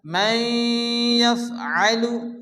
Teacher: নুন সেকেন্ডের পরে ইউমিনের ইয়াসে ইদগামে বাগুন্না